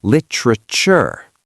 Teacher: Lit-ra-ture. Actually, in American English, that t becomes a little soft, almost a ch sound.